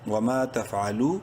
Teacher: واو مدہ ہے، لام کو بھی ایک کے برابر لمبا کریں گے